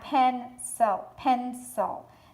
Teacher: So pen has the brunt of the accent. Sil is the unaccented part.